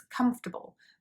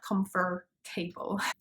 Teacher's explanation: so that a isn't pronounced in the same way and also in british english you can't hear the r even though it's there